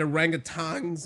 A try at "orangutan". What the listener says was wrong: It's orangutan. Orangutan. It's just not orangutan. There's no G.